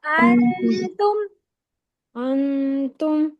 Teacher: यहां पर आपने नून का मखरज नहीं लेना आपने सिर्फ खशम से पढ़ना है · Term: इफा